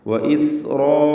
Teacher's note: 4-5 ഹറക്കത്തിൻ്റെ അളവിൽ അലിഫിനെ ദീർഘിപ്പിക്കണം.